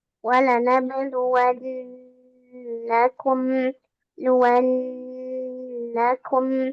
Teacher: Ketika kita membaca nun dan mim musyaddadah juga idgham bi gunnah atau idgham mimi seperti ini, maka dia berarti tingkatan gunnahnya itu yang akmal matakun. Ditahannya yang paling lama.